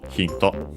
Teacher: Accented just like in English on the first syllable